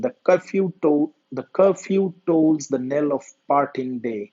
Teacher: has five pairs of syllables for a total of 10 syllables in each pair the first syllable is unstressed or unaccented and the second is stressed or accented as in the two lines that the open poem the curfew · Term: AIC pentameter, iambic pentameter